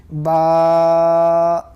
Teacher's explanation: دونوں ہونٹوں کے گیلے حصے سے با ادا ہوتا ہے